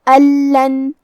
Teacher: کلمت ان کے آخری میں نون ساکن ہے، پھر حرف اللام ہے، تو یہاں حکم ہے ادغام بغیر غنہ، تو ہم یہ حکم کو بغیر غنہ سے لیکن تشدید کے ساتھ ادا کریں گے